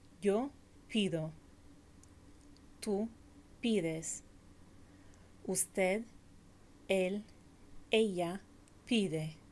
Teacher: There is a third kind of stem vowel change in some verbs, such as pedir, to ask for or to request. In these verbs, the stressed vowel in the stem changes from E to I.